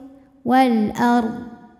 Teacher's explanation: D yang sukun ini jelas bacanya nah ini Dod harus tetap terbaca ya tapi jangan memantul